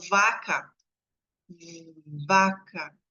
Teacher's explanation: você coloca a a mão na no pescoço você consegue sentir quando eu falo vaca vaca eu consigo saber que é um v por causa da vibração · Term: sonoro